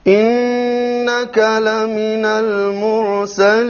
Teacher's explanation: Here we have a Ra, which is silent Ra, preceded by a Dhamma, so it will be heavy.